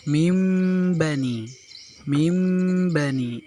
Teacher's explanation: iqlab artinya mengganti bunyi bacaan nun mati atau tanwin menjadi mim apabila huruf sesudahnya adalah huruf ba. Karena huruf dari iqlab adalah hanya pada huruf ba.